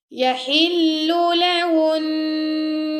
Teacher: ہا گلے کے درمیان سے، اور ہن پہ ہم غنہ کریں گے